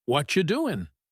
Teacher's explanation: What are turns into whatcha, and you is reduced. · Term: connected speech